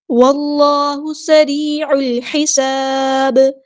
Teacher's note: واو کو لام کے ساتھ ملا دینا، حمزۃ الوصل ہمارا ڈراپ ہو جائے گا. اللہ کا جو لام ہے وہ ہے بھی ادا کرنا ہے.